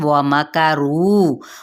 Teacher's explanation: واو ہونٹوں کی نا تمام گلائی کے ساتھ